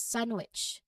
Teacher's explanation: you'll hear the N flow directly into the W sound